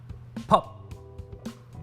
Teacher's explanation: example of a consonant phoneme produced using a strong voiceless articulation this type of phoneme produces a popping sound but is unvoiced or voiceless voiceless means producing a sound without the vibration of the vocal